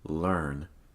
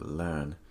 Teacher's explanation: In British English, typically the R is not pronounced.